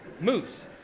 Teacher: in Scotland, moose is a mouse. It's the original pronunciation.